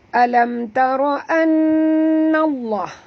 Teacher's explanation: nun di atas nun ada tasydid, wajib dengung, wajib al-gunah alam tara anna Allah, dengung 2 harakat.